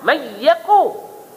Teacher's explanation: nun mati itu dikosongkan, ya itu ada sabdu, maka nun itu masuk dalam ya. Mayyaku.